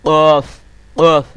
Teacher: আপনার জিহ্বার গোড়াটাকে আপনার উপরের তালুর সাথে লাগিয়ে উচ্চারণ করতে হবে